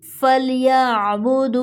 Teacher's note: عین ساکن ہے، کو نرمی سے پڑھیں گے، جھٹکا نہیں دیں گے۔